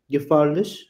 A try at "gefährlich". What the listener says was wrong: it's not a. So whenever you have this a umlaut, right? You should say, how you say air in English, like air that we breathe. So just say air without the r part. That's how you say most of the times. And if you're even not sure, just say a. Ideally it should be that a of air, but if you're not sure, just say a. Gefährlich.